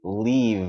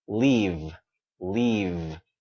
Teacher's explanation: the final sound let's give it voice